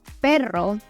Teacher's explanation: the side and that kind of keeps my tongue stable but the front of the tongue I kind of let vibrate as the air comes through between the tongue and the roof of my mouth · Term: rolling R